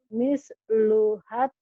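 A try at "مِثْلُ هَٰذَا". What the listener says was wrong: jangan misluhad. Mislunya pendek. Mislu hazil unsayain. Mislu hazil unsayain.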